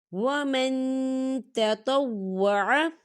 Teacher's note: ان یطوف بہما ومن تطوع، ومن تطوع، یہ دیکھیں ومن، یہاں پہ نون ساکن ہے اور نون ساکن کے بعد تا آ رہا ہے، اور تا جو ہے اکفا کا ورڈ ہے، تو یہاں پر اکفا ہوگا، ہم نون ساکن کی آواز کو ناک میں چھپائیں گے